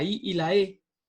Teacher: la lengua se coloca en la zona delantera de la cavidad bucal debajo del paladar duro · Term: vocales anteriores